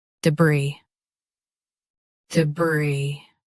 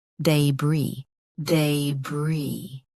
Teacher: US uses duh. UK uses day. Same brie.